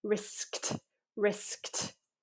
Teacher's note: risked, you need to feel that double burst